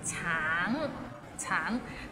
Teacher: It means orange, but some people might find it difficult because the end has a little ng, so it's a bit of nasal sound.